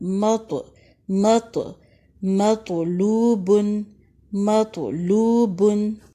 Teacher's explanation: تو کو بلند بھی پڑھیں گے، موٹا پڑھیں گے، اور اس کے ساتھ ساتھ تو ساکن پر کلکلا بھی کریں گے۔ مطلوبن، واو ساکن سے پہلے پیش ہے، 2 حرکات تک لمبا کریں، مطلوبن۔